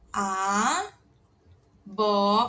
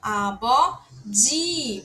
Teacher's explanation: Porque ele tá entre duas vogais, A e ó. Então ele vai ter som de B de bola.